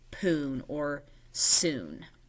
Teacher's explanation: the child drops one of the sounds in the cluster. So instead of spoon, they say poon or soon. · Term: cluster reduction